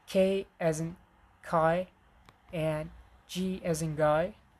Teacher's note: we have velar plosives, and it's K as in kai and G as in guy